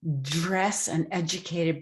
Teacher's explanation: dress and educated both with affricated d sounds